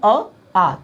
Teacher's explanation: ध्यान से देखिएगा, आ कहोगे तो मुंह खुलेगा और आपके कंठ का इस्तेमाल होगा, लेकिन मैं कहूँ आ, तभी तो भैया वो ह्रस्व का दीर्घ है, दुगना समय लगता है कि नहीं।